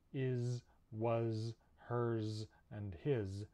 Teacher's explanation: these are all spelled with s but we actually pronounce them with a zed sound in english